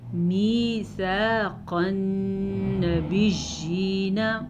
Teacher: قاف کو موٹا پڑھیں گے حروف مستعلیہ میں ہے اس لیے. نون پہ غنہ کریں گے نون پہ شد ہے اس لیے